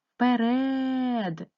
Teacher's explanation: першу звуком чується звук у звук е вимовляється наближено до и ставимо наголос вперед наголос падає на е